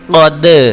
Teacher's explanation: تو اس کو پڑھیں گے قاف زبر دال قد۔ دیکھیں قاف بھی پڑھا اور دال کی آواز کو بھی جنبش دے رہے ہیں، قد۔ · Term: حروف قلقلہ